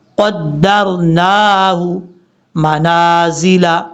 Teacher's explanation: قاف حروف مستعلیہ میں سے پر پڑھا جائے گا، والقمر قدرناہ، نون کے اوپر کھڑا زبر لمبا کریں گے